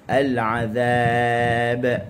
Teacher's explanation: Azab, hujung lidah di hujung gigi atas. Hujung lidah di hujung gigi atas.